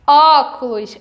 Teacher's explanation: o acento na palavra óculos é o acento agudo porque o som é mais aberto